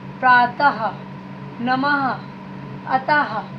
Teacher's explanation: जब ऐसी बिंदी लगी होंगी, ऐसे विसर्ग लगा होगा, तब उसमें हा की ध्वनि निकलती है। अब है आंख को अनुनासिक कहते हैं।